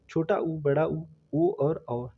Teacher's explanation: मुखी स्वर त मुखी का मतलब होता है जिनके उच्चारण में जब हम उनको बोलते हैं तो हमारे ऊट जो होते हैं वो गोलाकार हो जाते हैं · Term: वृत मुखी स्वर